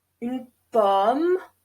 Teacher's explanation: it's like between [ɑ] and [o] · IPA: [ɔ], [yn pɔm]